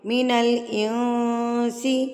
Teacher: ہم یہاں پر اس کو اقفا کریں گے، یعنی کہ ناک میں اس کی آواز کو چھپا کے پڑھیں گے